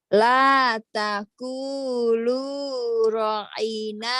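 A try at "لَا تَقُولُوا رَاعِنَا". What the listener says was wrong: Rohnya panjang. ah, la taqulu ra'ina wa qulu.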